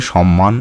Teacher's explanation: সমীভবন যেমন সৎ যুক্ত মান থেকে তৈরি হচ্ছে সম্মান শব্দটি এখানে পরবর্তী ব্যঞ্জন ধ্বনি ম এর প্রভাবে পূর্ববর্তী খন্ডত পরিবর্তিত হয়ে একই রকম ধ্বনি ম হয়ে গেছে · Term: পরাগত সমীভবন